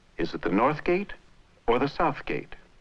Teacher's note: There is a rise on South and then a final drop.